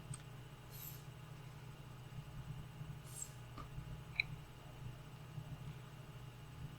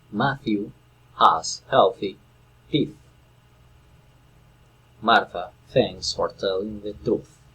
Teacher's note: this one is a voiceless dental fricative sound that is as there is no vibration in the vocal cords